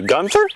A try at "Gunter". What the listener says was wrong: It's Gunter, no H. Trust me, it's Gunter.